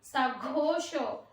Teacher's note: ఆ ఘో అనేది మహాప్రాణాక్షరం అండి.